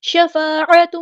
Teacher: عین کو وسطی لیکن مڈل تھروٹ سے ادا کرنا ہے